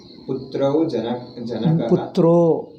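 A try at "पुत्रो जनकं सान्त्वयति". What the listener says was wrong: But janakaha eke helodu? Putravu alla, putro.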